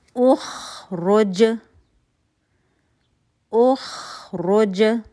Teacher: را, پیش پڑھا جائے گا, پھر ہونٹ گول ہوگا. جیم ساکن ہے, رک رہے ہیں ہم, یہاں پہ کلکلا ہو رہا ہے